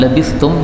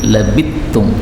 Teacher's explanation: labistum sa ketemu ta boleh idgham menjadi labittum